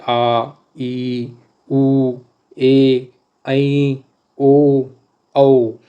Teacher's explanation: ये बड़े स्वर हैं और इनके उच्चारण में दो मात्रा का समय लगता है या स्वर से ज्यादा समय लगता है। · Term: दीर्घ स्वर